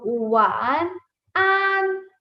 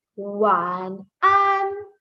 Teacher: this an has the first tone, so we stretch it a little